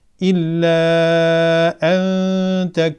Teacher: sonra ihfa harflerinden t harfi gelmiş ve burada ihfa meydana gelmiştir nunun sesini gizleyerek okuyoruz